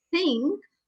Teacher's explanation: my tongue is touching my teeth from behind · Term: dental